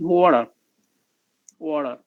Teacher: The idea is the contrast between t and d is neutralized at this point.